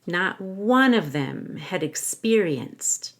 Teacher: make sure one starts with a w and that you stress it